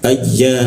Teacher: Di tengah-tengah lidah dia. Ayya tapi ada hembusan karena ya bertasjid itu pertama rongga udara yang terkunci lalu terbuka. Ayya seperti itu.